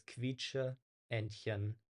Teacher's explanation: there are two E's here. They're pronounced separately, right? It's not like a long E sound, but it's quietsche, Entchen.